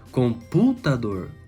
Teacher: o dor já é fraco lá no fim, o tá ficou fraco também, o pu ficou forte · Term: proparoxítona